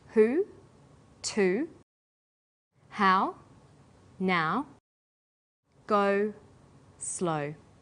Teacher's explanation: High back vowels are oo, ow, and o. Sounds that are produced with the highest part of the tongue but close to the back of the mouth.